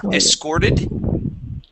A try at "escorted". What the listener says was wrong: Yeah, so when you read through this before, you had missed that S.